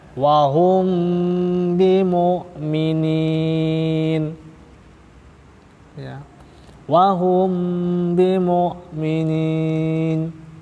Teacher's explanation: Mengapa dinamakan ikhfa dikarenakan sebab samarnya hukum mim mati ketika bertemu dengan huruf ba Oh ya Hai sebab kesamaannya dalam makhraj dan sifat huruf mim · Ya. Jadi bacaan hukum mim mati bertemu ba itu bacanya samar, juga disertai dengan gunnah atau tempo dengung dua harokat. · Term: Ikhfa Syafawi, ikhfa syafawi